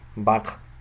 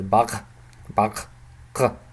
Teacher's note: this sound is a uvular, is a voiced or semi-voiced, let's say semi-voiced uvular stop. So it's pronounced in the uvular region.